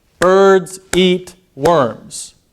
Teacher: of stress time languages so what so with with this sentence birds and eat and worms those are the stressed syllables those are emphasized